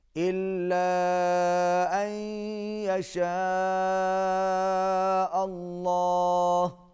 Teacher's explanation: اللہ کا لام موٹا پڑا جائے گا